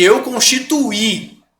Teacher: ao invés de um ditongo agora eu tenho um hiato